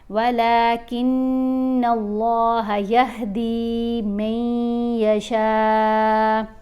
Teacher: نون کے اوپر ہم نے غنہ کرنا ہے، آواز ناک میں جائے گی، ایک الف جتنا ٹھہر کر پڑھیں گے، پھر اللہ کی لام کو موٹا پڑھیں گے.